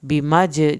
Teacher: जब हम मज करेंगे जीम पे हम कलकला करेंगे